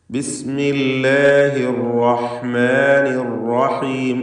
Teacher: റാ തടിപ്പിച്ച് തഫ്ഖീം ചെയ്ത് ഉച്ചരിക്കുക എന്നത് ശ്രദ്ധിക്കുക. ഷദ്ദുള്ള റാ ആണ്. അതിന് തക്രീർ കൂടുതൽ വരാതെ ശ്രദ്ധിക്കണം. അർ എന്ന വിറപ്പിക്കൽ വരരുത് എന്നതും ശ്രദ്ധിക്കേണ്ട കാര്യമാണ്.